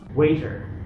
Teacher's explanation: американцы, как всегда, произносят дифтонг A и окончание R